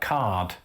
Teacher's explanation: most of Britain would have pronounced the R in words like card. That linguistic phenomenon is known as rhoticity and is a large feature, of course, of American English today.